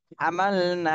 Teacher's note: নাতেও এক আলিফ টান দিতে হবে জবরের বামে খালি আলিফ মদের হরফ এজন্য এই নাতেও এক আলিফ